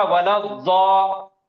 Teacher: حمزۃ الوصل اور لام دونوں بھی ڈراپ ہو جائیں گے, اور یہ ضاد پچھلے والے لفظ کے آخری حرکت سے مل کے پڑے گا